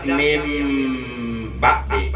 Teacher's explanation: merubah bunyi nun mati atau bunyi tanwin, dirubah ke dalam bunyi huruf mim mati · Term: ikhlaf